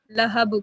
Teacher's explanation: حالت وقف میں 2 زیر کی تنوین حذف ہو جائے گی، تو اس وجہ سے یہاں ہم قلقلہ کریں گے، لہب پڑھیں گے۔